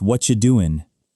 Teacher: What are you smashes into whatcha, and doing drops the G to become doin'.